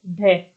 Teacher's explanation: इन वर्णों का उच्चारण जब हम करते हैं तो हमारी जीवा है वो उठकर गिरती है, हमारी जीवा उठकर एक झटके से नीचे गिरती है, तो हम इसे क्या कह देते हैं, उत्क्षिप्त व्यंजन कह देते हैं।